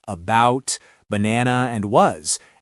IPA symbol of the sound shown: ə